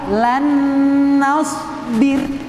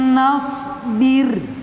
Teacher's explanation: setengah nun masuk ke dalam nun yang bertasydid atau nun idgham yang bertasydid